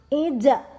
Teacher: ketika huruf ja berada di tengah, pantulannya kecil, ija. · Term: qalqalah